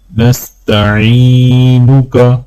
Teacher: عین کو جب یا کے ساتھ ملائیں گے تو ایک الف کے برابر کھینچیں گے